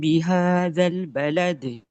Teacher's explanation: ملانے کی صورت میں حمزۃ الوصل کو بھی گرائیں گے اور یہ مد والا جو الف ہے یہ بھی گر جاتا ہے. ڈائریکٹلی زال کی فتح کو لام سے ملانا ہے، ہلانا نہیں ہے.